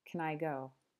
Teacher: So instead of hearing can, like in our video with Ashley, you probably just hear kun. It almost sounds like there's no vowel, kun, like can I go?